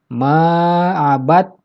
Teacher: Cara membacanya, huruf yang pertama yaitu dal diidghamkan atau dimasukkan ke huruf yang ada di depannya, yaitu huruf ta. Jadi ketika dibaca, yang terdengar adalah huruf kedua, yaitu huruf ta. · Jadi huruf dalnya tidak terdengar dalam pembacaannya. Maksudnya tidak terdengar bunyi huruf dal ketika dibaca. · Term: idgham mutajanisen